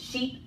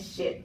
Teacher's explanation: E is a front high vowel that is tense, and I is a front high vowel that is lax.